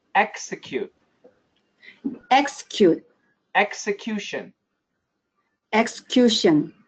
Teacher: So execute and execution. For both of these, we actually say EKS for both of them. So the rule is broken for those two.